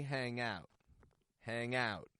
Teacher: raising the stress on the out